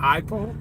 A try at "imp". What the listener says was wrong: There's no L in there. It's imp. Imp. Imp. Imp. No, you said limp originally. That's an I at the beginning. That's a capital I.